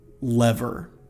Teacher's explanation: You want your tongue to be touching at the beginning for that initial L, but it should not touch your gum ridge when you make that final R.